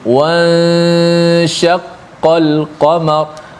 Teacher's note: Dipanjangkan gunnah pada ikhfa, nun bertemu dengan huruf shin.